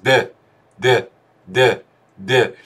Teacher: d de dille söylenen bir harf. Yani dilin üst damağı değmesi ve aşağı inmesiyle çıkan bir ses.